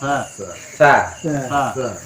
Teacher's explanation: Ujung lidah dengan gigi seri atas. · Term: huruf ta